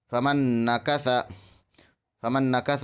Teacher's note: ادغام مع الغنہ میں ناک میں آواز لے جا کر پڑھیں۔